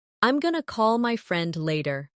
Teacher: Did you notice going to became gonna? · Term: connected speech